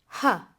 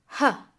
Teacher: the aspirate, pronounced with voice and with aspiration